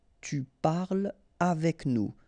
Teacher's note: so no liaison here between parle and avec